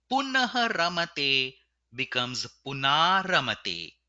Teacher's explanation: The visarga at the end of punaha has been removed and the a before the visarga has been converted to a.